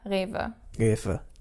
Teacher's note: The R at the beginning is our guttural R, and then the W pronounced like a V.